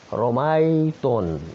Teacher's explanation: کسرے کو بھی جھکاؤ دے رہے فتح کی طرف، فتح کو جھکاؤ دے رہے کسرے کی طرف، اور جو ہے الف کو جھکاؤ دے رہے ہیں یا کی طرف. اسی کا نام تو امالہ ہے.